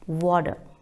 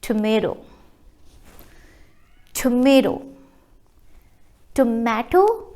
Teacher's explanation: when T comes between two vowel sounds is called flapped T